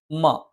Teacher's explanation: മ രണ്ടു ചുണ്ടും തുല്യമായി അടച്ചുവെക്കണം